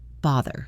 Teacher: The pronunciation of bother has a voiced th sound like mother or father.